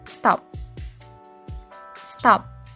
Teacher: in a word stop you no longer have that puff of air